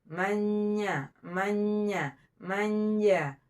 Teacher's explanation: Jim, tengah-tengah lidah kita diangkat ke langit-langit.